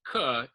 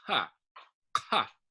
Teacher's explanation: So it's the lowercase q in Klingon is similar to the K or the Q sound in English. But the difference is that it's pronounced way at the back of the throat. So it's not k, it's ka, ka. · So it's not k, it's ka, ka. Yeah, it just sounds like there's like a bit of air puffing out, right? So it's also like one of these ones that's coming as far at the back of the throat.